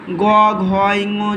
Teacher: ঘোষ বর্ণ প্রতি শ্রেণী তৃতীয় ও চতুর্থ পঞ্চম বর্ণ উচ্চারণের সময় বাতাসের ধাক্কায় স্বরতন্ত্রের কম্পন হয় বলে কণ্ঠস্বর গম্ভীর হয়